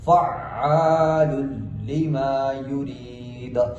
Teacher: آخر میں وقف کرنا ہے، اور وقف کی حالت میں دال کو ساکن کریں گے، ساکن کرتے ہوئے جب بھی دال ساکن ہوگا تو حروف قلقلہ میں سے ہم نے قلقلہ بھی کرنا ہے